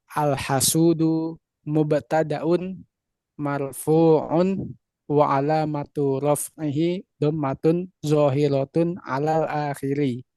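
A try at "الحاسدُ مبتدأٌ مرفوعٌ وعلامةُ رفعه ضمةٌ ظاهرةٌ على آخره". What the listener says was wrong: Betul terus ya.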